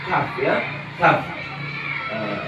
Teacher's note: Kemudian ada di pangkal lidah agak maju ya, agak maju bertemu dengan langit-langit, itu ada huruf kaf